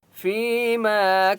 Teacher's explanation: یوم القیامت فیما کانوا فا یا ظرفی یا مدہ ہے، فا کو ایک الف کی مقدار کھینچ کر پڑھیں گے. ما الف مدہ ہے، میم کو ایک الف کی مقدار کھینچ کر پڑھیں گے